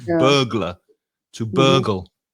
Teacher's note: the vowel sound of burgle or burglar is uh. So, it's the same as in words like nurse or learn.